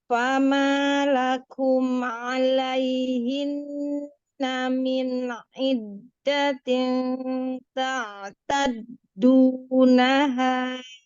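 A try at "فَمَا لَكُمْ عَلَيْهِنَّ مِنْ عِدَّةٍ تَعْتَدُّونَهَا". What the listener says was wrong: Ini bagus ya tasdidnya, tapi tin ketemu ta ini ujung lidahnya tempelin ya. Belum nempel.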